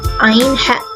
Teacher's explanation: tenggorokan itu menyempit dan mendekati akar lidah. dari dinding tenggerokan tanpa menyentuhnya.